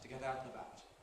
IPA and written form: tə ˈget ˈaʊt nəˈbaʊt (to get out and about)